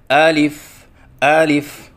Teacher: بعض بچے الف کے شروع میں جو حمزہ ہے اس کو لمبا کر کے پڑھتے ہیں